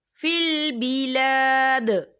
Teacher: جب آیت ختم ہوتی ہے تو دال جو ہے ساکن ہو جاتا ہے، اور دال جو ہے کلکلہ کا ورڈ ہے، تو ہم یہاں کلکلہ کریں گے